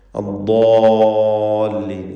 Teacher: നാവിൻ്റെ സൈഡാണ്, നീളത്തിലാണ് ദ്വാദിൻ്റെ മഖ്റജ്. ഹാഫത്തുൽ ലിസാൻ മഅ അൽ അദ്റാസിൽ ഉലിയ, തൊട്ടു മേലെയുള്ള അണപ്പല്ലുമായി ചേർത്ത് വെച്ചുകൊണ്ടാണ് ദ്വാദ് ഉച്ചരിക്കേണ്ടത്. ഇസ്തിഅലാഇൻ്റെ 7 ഹർഫുകളിൽ വളരെ ശ്രദ്ധിക്കേണ്ട അക്ഷരമാണ്.